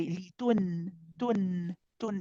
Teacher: the tip of the tongue will touch the gums behind the upper two teeth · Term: noon